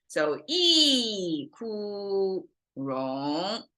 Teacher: So you can kind of see it forms tonation-wise a valley over here. So there's a falling, flat, rising.